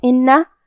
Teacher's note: حرف النون پہ تشدید ہے، لہذا ہمیں دو حرف کے برابر نون کو پڑھنا ہے، کیونکہ تشدید کی اصلیت دو حرف ہے.